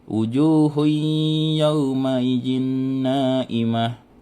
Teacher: Cara membacanya itu dengung dan ditahan sampai 3 harokat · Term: idgham biguna